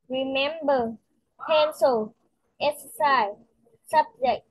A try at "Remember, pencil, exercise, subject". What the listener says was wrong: Excellent. Thank you.